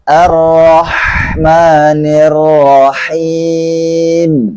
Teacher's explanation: fathah yang ditebalkan dan bibir tidak berpengaruh ketika huruf Ra diucapkan. Karena di sini Ra-nya tidak memakai dhammah, maka bibirnya dibuka saja seperti biasanya.